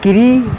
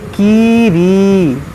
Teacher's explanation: देखिए ये या साकिन से पहले ज़ेर या मद्दा है, यहाँ पर या साकिन से पहले ज़ेर या मद्दा है, तो दोनों को खींचेंगे। व तज़कीरी, इसको किरी ना पढ़ें बल्कि कीरी खींचें।